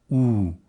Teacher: Crystal cautions us to retain the lip rounding of conservative RP, ooh, in the goose lexical set